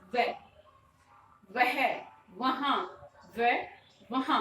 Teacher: व के लिए जो उच्चारण स्थान है वो सबसे अलग है। व का जो बनेगा वो बनेगा ऊपर वाले जो दांत और नीचे वाला जो होठ है, यानी कि दंतोष्ठ से वह बोला जाएगा।